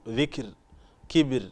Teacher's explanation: هذه الراء مرققة، وسبب ترقيقها أنها ساكنة وقبلها كسر أصلي وفصل بينهما فاصل غير حرف استعلاء. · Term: الراء المرققة